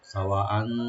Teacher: ওয়া ওপেন রেখে চারের টানবেন এখানে মধ্যে মুত্তাসিল